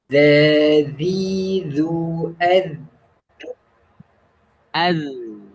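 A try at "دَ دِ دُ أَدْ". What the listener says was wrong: Ya, jadi tanpa mengeluarkan angin ya, tanpa mengeluarkan angin. Jadi dal itu sifatnya sifat rokoah, bukan hamas ya. Untuk makronya, untuk dal itu dari mana? Ujung seri gigi atas ya. Ujung gigi seri atas.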